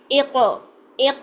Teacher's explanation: قاف کی آواز کو ہم ہلائیں گے جو کہ قلقلہ ہوگا